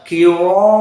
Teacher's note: selain dari Warsh, maka dibaca dalam keadaan tafkhim, bahkan tafkhim yang sangat kuat karena ada mad tabi'i.